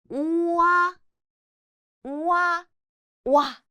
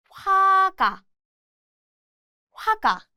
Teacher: It's a combination of O and A. Pronounce O and A quickly together